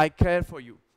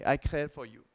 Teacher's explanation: अगर हम इसको यूएस स्टाइल में बोलेंगे तो आई केयर फॉर यू, तो पूरा र तक टच करेंगे